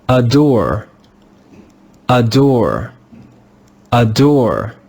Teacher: Can you hear how the first syllable is not stressed? · The third sound made by the English letter A is the sound of the schwa, This sound is found any time the letter A is in a syllable that is not stressed. When the letter A is in a syllable that is not stressed, it's pronounced with the sound of the schwa